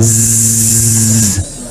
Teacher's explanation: kalau zai agak tutup lebih rapat